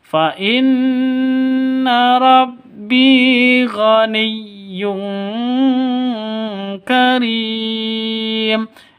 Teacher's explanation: non tanwin bertemu dengan kaf, samar dengung, tanwinnya ditambah dengan ng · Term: Ikhfa hakiki